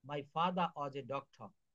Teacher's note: দেখেন লক্ষ্য করুন এখানে ফাদার শব্দটি শেষে আর আছে এবং পরের শব্দটি ওয়াজ যেটি প্রথমে ডবলিউ রয়েছে কনসোনেন্ট রয়েছে। এখানে ফাদারের শেষে আর এর উচ্চারণ হবে না।